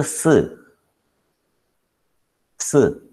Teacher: If you hold your throat, you will understand that there is no vibration for s.